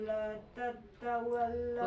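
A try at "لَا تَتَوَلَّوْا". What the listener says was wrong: La tatawallau. Nggak pakai tasitanya ya. La tatawal dihampangkeun. Bukan tat. La tatawal. Tatawal.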